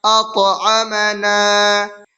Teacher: اطعمنا، حمزہ طا زبر اط، عین زبر ع، اطع، میم زبر ما، اطعم، نون الف زبر نا، اطعمنا۔ طا حروف قلقلہ میں سے ہے اور طا کے اوپر جزم ہے تو اس میں قلقلہ ہوگا